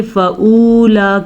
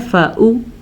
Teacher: अब बाज़ लोग क्या करते हैं, वाव को भी पढ़ लेते हैं, यानी कि फ़ऊला कर लेते हैं या फ़ऊ थोड़ा सा भी लंबा करेंगे तो ये वाव मद्दा बन जाएगा। आपने पढ़ना है फ़ऊलाइका, ठीक है।